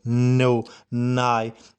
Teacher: Then n sound goes for nasal, no, nigh